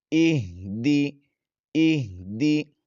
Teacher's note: حمزہ ہا زیر ای، دال زیر دی، ایہ دی، ایہ دی۔ ہا کی آواز بھاری اور دال کے نیچے زیر ہے